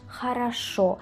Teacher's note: tenemos la regla de la reducción vocálica donde la O pasa a la A